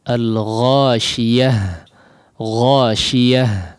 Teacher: Dilepas udaranya, ya, atau suaranya dilepaskan, ya, dalam pengucapan huruf tak marbutah yang menjadi huruf ha ini. Ghasyiyah, ya, ya, ya, ya, dialirkan si udaranya.